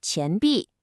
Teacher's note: You have to notice that rising, kind of questioning second tone in 钱 for coin. Your voice goes up.